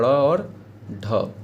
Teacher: ये दोनों मूर्धन्य यानी कि मूर्धा से स्टार्ट होता है बोलना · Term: मूर्धन्य व्यंजन